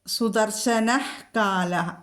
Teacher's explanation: വിസർഗം കഴിഞ്ഞിട്ട് കാ വന്നാൽ ഹ ജിഹ്വമൂലിയം, വിസർഗത്തിൻ്റെ പകുതി ഹ ചൊല്ലണം.